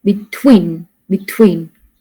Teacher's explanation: and between we stress on the second syllable